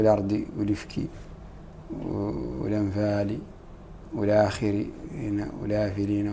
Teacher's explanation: حركة الهمزة ينقلها إلى لام التعريف المتصل بها